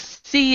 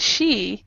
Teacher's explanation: see is in the front she is in the back